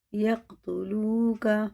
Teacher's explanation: واو ساکن سے پہلے پیش ہے تو الٹے پیش کی طرح کھینچ کے پڑھیں گے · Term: حرف مدہ